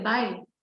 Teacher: when we say farewell bye the pitch goes down